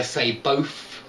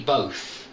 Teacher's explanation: I say both with an F really at the end